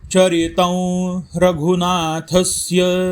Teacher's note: चरितं त वरती अनुस्वार आहे, समोर र हे अक्षर आहे, अनुनासिक वंचा उच्चार होणार।